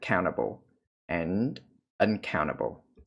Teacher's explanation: Phụ âm NT này thì chúng ta có, người Mỹ thì, cái tiếng Anh Mỹ thì họ thường là không phát âm chữ T